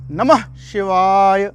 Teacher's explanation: तो किस प्रकार से उसको देखें, नमः शिवाय, आपने नमः जोर से बोला, ना पे भी पूरा बल जा रहा है, माँ पे भी पूरा बल जा रहा है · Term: उदात्त